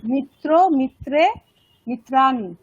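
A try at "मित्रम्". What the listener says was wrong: মিত্রাম, ফলম হচ্ছে না। হ্যাঁ তাহলে মিত্রাম বলতে হবে তো, মিত্রা বলছেন আপনি তাই না? মিত্রাম বলতে হবে, মিত্রাম।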